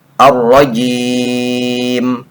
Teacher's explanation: Ji yang tadinya 2 harokat mad tabi'i menjadi lebih panjang dari biasanya, bisa sampai 5 sampai 6 harokat, disebutnya mad arid li sukun.